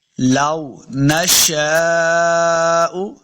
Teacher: دیکھیں جب بھی واؤ کو پڑھیں گے دونوں ہونٹ گول ہوں گے تب واؤ کا مخرج صحیح ادا ہوگا. لو نشاء شین کے آگے الف، اس کے اوپر بڑی مد ہے تو ہم نے اس کو لمبا کر کے پڑھنا ہے